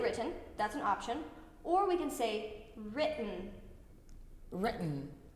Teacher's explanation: the first part rid is gonna be long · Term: glottal stop